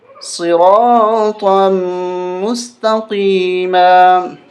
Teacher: یہ طا کو میم کے ساتھ ملائیں گے، طا میم 2 زبر، اس الف کو نہیں پڑھیں گے۔